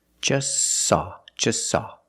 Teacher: is between consonance so don't pronounce it it's silent just saw you link the S with the S link them together · the t is between consonance so don't pronounce it it's silent just saw you link the S with the S link them